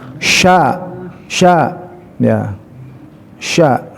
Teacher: huruf sya, huruf tafashi, huruf yang melebar, jadi suaranya besar, melebar ya